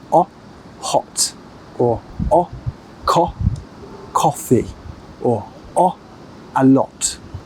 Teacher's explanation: another big difference with British English is that we like to use a clear aw sound with many words